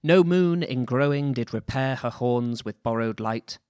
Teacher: golding wrote in iambic heptameter also known as fourteeners seven feet of two syllables with that famously shakespearean stress pattern